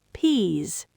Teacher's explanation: Peas ends with a voiced Z sound, long vowel.